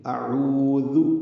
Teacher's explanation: واو کو ہونٹوں کی نا تمام گلائی سے ادا کریں گے. ہونٹ آگے لائیں گے باہر کی جانب اور گول ہوں گے, نا تمام گول ہوں گے. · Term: واو مدہ